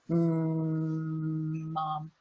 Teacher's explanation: we have to close the lips completely. Mom. And the sound cannot exit through the mouth, so it exits through the nose.